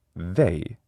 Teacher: they is a diphthong. It starts with e, but it ends with I. They. And that is not the same as e, which is a pure vowel sound.